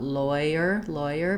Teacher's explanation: still starting with that ah rounding but you can almost go to a full o rounding and then to a more of a tense e